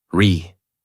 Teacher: Voice rises and falls.